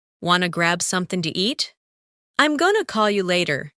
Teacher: want to becomes wanna. Going to becomes gonna